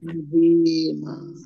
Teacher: Untuk kasroh ya sukun, mat tabi'i, panjang 2 harokat. Fathah tanwin alif, karena wakof dibaca panjang dibaca fathah dan panjang 2 harokat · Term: mat iwad